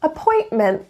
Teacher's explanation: Notice the two glottal T's.